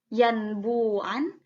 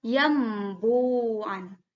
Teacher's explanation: Jadi nunnya diganti menjadi m, n-nya diganti menjadi m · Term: iqlab